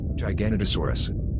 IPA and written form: ˌdʒaɪɡəˌnoʊtəˈsɔːrəs (Giganotosaurus)